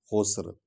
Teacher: لفی خسر، خسرن ہے لیکن آیت ختم ہو گئی ہے، خسر سین سیٹی کی آواز نکلے گی